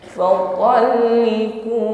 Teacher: karena kita waqaf di nun bertasydid, maka di situ ada hukum gunnah musyaddadah, tampakkan bunyi dengungnya, ditahan sejenak.